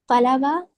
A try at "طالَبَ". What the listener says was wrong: नहीं, तलबा नहीं, तालबा। ता को थोड़ा खींचिए।